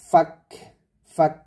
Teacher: এখানে একটা হামস হবে এটা অর্থাৎ ফাক ফাক এরকম একটা বাতাস বের হবে